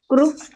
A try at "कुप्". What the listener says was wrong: क्रूप नहीं बोलना है, कूप कूप कूप